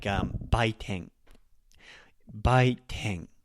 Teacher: Bai is lower, and then teng. Baiteng. The E is actually up as well.